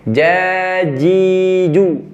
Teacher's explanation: Kadang ada beberapa teman-teman kita pakai ujung lidah jadi ada suara tambahan seperti C.